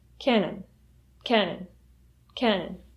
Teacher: When you say the word cannon, the stress is on the first syllable and the second syllable has a schwa sound.